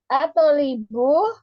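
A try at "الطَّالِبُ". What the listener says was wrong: At-tolibu. Iya, toknya ditasydid. At-tolibu. At-tolibu.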